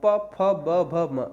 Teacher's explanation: अगर आपके ओष्ठ काट दिए जाए ना तो होठों के बिना आप नहीं बोल सकते पा वाले